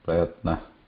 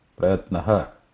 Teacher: Visarga, the way to pronounce it is just a release of breath. Light release of breath. Prayatna. It is not ha.